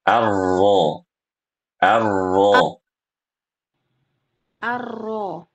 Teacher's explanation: Ketika membaca huruf ronya harus tebal suaranya. · Ini sudah tebal. Yaitu pangkal lidahnya sudah naik.